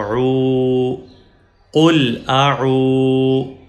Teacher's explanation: جب واو کے اوپر جزم ہو اور واو سے پہلے والے حرف پہ پیش ہو تو واو ایز مدہ یا لانگ واول پڑھی جائے گی. تو اب ہم عین کو اسٹریچ کریں گے، عین کو لمبا کریں گے کیونکہ عین کے بعد واو مدہ یا واو لانگ واول ہے